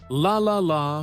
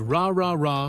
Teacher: The key here is tongue placement. For the L sound, the tongue touches the top of the mouth behind the teeth, but for the R sound, the tongue stays back without touching anything